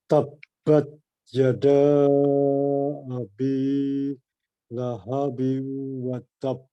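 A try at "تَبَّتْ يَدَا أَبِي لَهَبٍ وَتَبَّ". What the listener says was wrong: Masya Allah, mumtaz, mumtaz, Pak. Barakallahu fiik.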